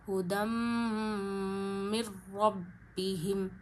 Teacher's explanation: نون ساکن کو را سے ملاتے ہوئے غنہ نہیں کریں گے